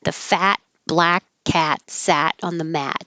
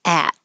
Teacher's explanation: It's really good practice for opening up, getting you used to making the American ah sound.